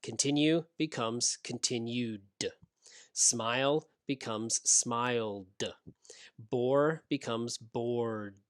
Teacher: all of these make your throat vibrate so the ed is pronounced d the dog sound